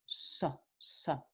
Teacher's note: En el norte y centro de España no es predorso alveolar, es ápico alveolar. Ápico alveolar.